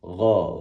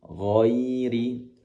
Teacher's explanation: Adapun ghain berasal dari tenggorokan paling atas. Gha dan pangkal lidah naik ke atas.